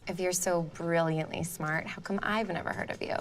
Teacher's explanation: Like, sis, you are serving vocal fry